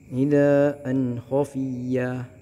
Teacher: mad iwad ini tanwinnya diwakafkan. Cara bacanya adalah 2 harokat